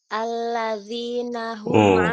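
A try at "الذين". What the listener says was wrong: Huruf zalnya tipis, Bu. Alladzi, bukan alladzi, bukan. Pangkal lidah jangan naik, pangkal lidahnya turun.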